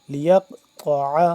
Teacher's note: قلقلہ، تو اس یہاں پہ قلقلہ ہوگا۔ لیقطع، طا بھی موٹا کر کے تا سے جدا پڑھیں گے، طا موٹا ہوتا ہے